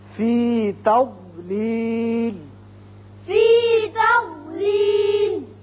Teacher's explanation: ضاد پر پڑھا جاتا ہے اور زبان کی کروٹ اور اوپر والے بائیں طرف کی جو داڑیں ہیں ان کے ساتھ لگتی ہے تو ضاد ادا ہوتا ہے، زواد نہیں ہے۔